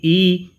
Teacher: ई जो स्वर है वह जीभ के अग्रभाग से बोला जाता है।